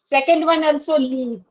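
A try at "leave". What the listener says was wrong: So there is no difference when you pronounce these two words. There's almost no difference. This is what I was trying to point out. In Hindi we have choti e ki matra and badi e ki matra, right?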